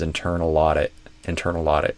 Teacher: So to learn how to connect these together in connected speech instead of pausing between these try moving the L to the beginning of the next word or or imagine that it's at the beginning.